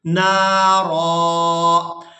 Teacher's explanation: وقف کی صورت میں ایک زبر کے ساتھ ادا کرنا ہے اور اس کو ایک الف مقدار کھینچ کر ادا کریں گے